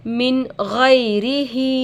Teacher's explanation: نون کے آواز کو ظاہر کر کے بغیر غنہ کے جلد پڑھیں گے اس کو اظہار کہتے ہیں غین پر زبر کی حرکت ہے